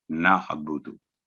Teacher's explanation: اگر ہم پڑھیں گے نعبدو تو یہ بھی غلط ہے، یا نعبدو تو یہ بھی غلط ہے. یعنی حمزہ کی آواز نہ نکالی جائے بلکہ آئین کی آواز گلے میں سے کوشش کر کے نعبدو پریکٹس کریں گے تو انشاءاللہ یہ ہو جائے گا.